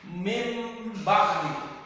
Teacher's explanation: Nun ini diganti dengan mim. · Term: iqlab